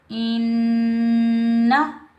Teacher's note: نون مشدد پر ہم ایک الف کی مقدار میں غنہ کریں گے